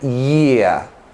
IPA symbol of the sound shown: ɪə